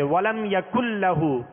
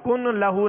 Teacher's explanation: یہاں نون ساکن کے بعد لام ہے، لہذا لام کو ہم نے نون کو لام میں داخل کیا، ملا دیا اس میں. اب نون کی کوئی صفت باقی نہیں رہے گی، یعنی اس میں غنہ نہیں کریں گے بغیر غننے کے. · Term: ادغام